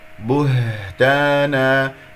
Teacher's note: رخاوة يجري فيها النفس مهموسة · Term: الها